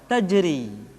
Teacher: Ra dibaca tipis ketika dia berharakat kasrah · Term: ra yang dibaca tipis